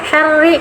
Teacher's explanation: Syarri ada ditekan, ada tasdid syar. Nah, ri-nya tarkik saja karena ro-nya berharokat kasroh, pangkal lidah tidak usah naik.